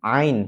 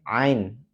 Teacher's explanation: huruf ain ini adalah huruf yang keluar dari tenggorokan bagian tengah. Nah, maka coba dirasakan ain, bukan ngain tapi ain.